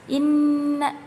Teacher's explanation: Sebabnya yaitu huruf nun yang bertasdid, jadi disebut gunnah. Dan cara membacanya yaitu dengung, sedikit ditekan ya teman-teman